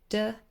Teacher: the tip of the tongue is touching the alveolar ridge when we say the sound D. So, tip of the tongue, D, is touching the little bump behind your teeth.